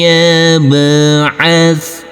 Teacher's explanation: huruf ba harus kita pantulkan di sini karena ini adalah bacaan qalqalah